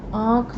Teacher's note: तो जब हम आँख बोलते हैं, तब आपका मुख और नाक दोनों का प्रयोग होता है, उसमें से वायु निकलती है।